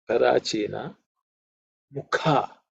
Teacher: This Ka is the second letter in the Ka varga, so it has to be aspirated.